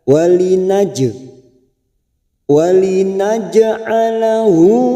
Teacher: Walinaj ada huruf jim sukun yang mati di tengah-tengah kalimat, namanya bacaan qalqalah sugro karena mati asli di tengah kalimat.